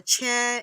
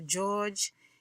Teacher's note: the ch sound is a combination of t and s and then d and z